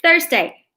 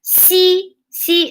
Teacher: you actually put the tip of your tongue between your teeth that's english the th